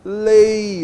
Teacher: Posso ter desnível também quando eu tenho E com I. Por exemplo, na palavra lei, ó, vogal mais semivogal.